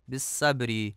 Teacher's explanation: بالصبر میں صاد کو سین پڑھا جاتا ہے